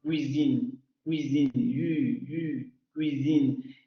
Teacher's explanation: redondeamos labios, subimos el dorso de la lengua al paladar, nuevamente, ni tan cerca que parezca una consonante, ni tan abierta que parezca una vocal, solo aproximándose, y vibración en las cuerdas vocales. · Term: aproximante labiopalatal sonoro